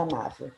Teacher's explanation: Se eu separar a sílaba da palavra amável, qual é a mais forte? A penúltima sílaba, porque eu sempre conto de trás para frente. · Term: paroxítona